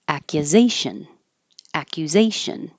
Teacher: the U will be very short so it'll be hard to notice